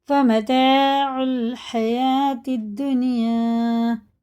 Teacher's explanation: یہ واو نہیں پڑھا جائے گا، یہ الف لام نہیں پڑھا جائے گا، تا سیدھا لگے گا دال میں